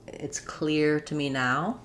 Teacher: for clear, we have the ear dip thong. Um, so that's a high front vowel ear sliding.